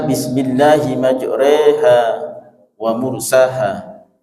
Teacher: menuturkan suara fathah condong ke arah kasrah hingga keluar bunyi mendekati yang tadinya ro menjadi re. Dalam bahasa capi Bismillahi majroha wa mursaha, dibaca Bismillahi majreha wa mursaha, rohnya dibaca tarkik tipis, majreha wa mursaha. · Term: imalah